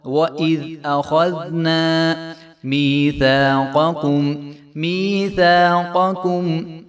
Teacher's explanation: أَخَذْ حمزہ جو ہے وہ باریک حرف ہے، آگے خواہ موٹا حرف ہے، دال پھر باریک ہے ، تو درمیان والا جب موٹا حرف آ جائے تو تھوڑی